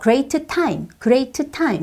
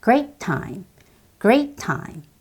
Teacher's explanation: great의 T와 time의 T가 사실 유사도 아니고 같은 소리예요. 그러면 그걸 한 번만 발음하시면 돼요.